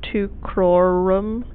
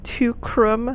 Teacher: So we're missing a syllable. It's just been sort of smashed together for meter. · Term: syncopated form